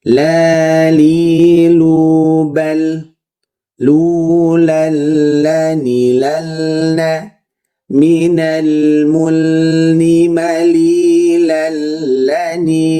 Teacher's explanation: La, li, lu, bukan la, tapi la. Bunyinya enggak a kayak orang Indonesia, enggak e kayak orang Inggris. Pertengahannya vokal a itu seperti itu.